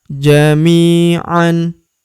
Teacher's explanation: Huruf mi kita panjangkan 2 harokat karena terdapat ya sukun di depannya